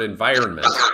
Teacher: with the same sound beginning with the final stressed syllable and the final stressed syllable in environment is that vi syllable